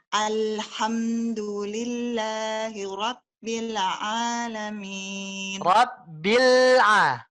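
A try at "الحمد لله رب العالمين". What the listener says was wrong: Rabbil tekan Bu, bil tekan. Kurang lebih seperti itu. Kembali lagi matnya, tolong disempurnakan Bu. Maknya hanya 2 saja.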